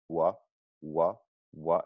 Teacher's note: So the W sound is all about tightness of the lips. It's really in a forward and very rounded position.